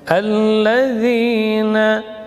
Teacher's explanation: Kalau nun ujung lidah menempel pada gusi atas bersamaan dengan khayshum. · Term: nun tawassut